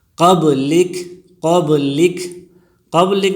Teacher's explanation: قبلک میں قلقلہ ہوگا، اس لیے کہ با ساکن ہے اور جب یہ ساکن آ جائیں تو اس پر قلقلہ ہوگا، اس لیے کہ حروف قلقلہ 5 ہے، قاف، طا، با، جیم، دال، جس کا مجموعہ ہے قطب جدن، قطب جدن۔